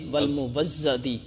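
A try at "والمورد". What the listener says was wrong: مٹا دیں نقطہ، مٹا دیں. میں نے تو نہیں نہ لگایا، میں نے تو مورد ہی پڑھا ہے، مورد ہی آپ کو پڑھانا ہے.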